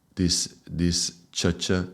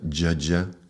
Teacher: Yeah, ch. So ch would be a voiceless and j would be voiced. Voice meaning vibrating.